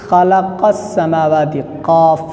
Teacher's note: مخرج نمبر 6، لحات یعنی کوے کی متصل زبان کی جڑ، اس سے قاف ادا ہوتا ہے۔